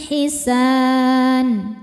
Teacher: Mad thabi'inya alif didahului fathah, huruf yang disukunkan nya nun. Maka dibaca panjang sinnya boleh dua atau empat atau enam harakat asal konsisten dalam sekali baca. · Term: mad arid lisukun